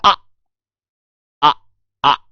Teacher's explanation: उच्चारण में मुख सबसे अधिक खुलता है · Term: विवृत स्वर